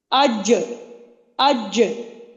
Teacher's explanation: جو زبان کا درمیان ہے وہ تالو کی طرف لگ رہا ہے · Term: جیم